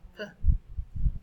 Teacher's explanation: That's the second sound from the letter P, which is articulated as P. It is a voiceless sound. It's also a bilabial sound. The lips are involved. And of course, it's a plosive sound because of the sudden release of air at the articulation of that sound.